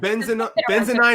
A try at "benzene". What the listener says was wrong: You put the emphasis on the wrong syllable.